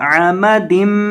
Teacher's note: एक अलिफ के बराबर गुना की मिकदार होगी क्योंकि मीम मुशद्दद है और मीम मुशद्दद को गुना करके पढ़ा जाता है। अमदिम मुमद्ददा,